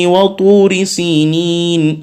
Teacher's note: وطور جو ہے یہ پر کر کے پڑھ رہے ہیں کیونکہ یہ حروف مستعلیہ میں سے ہے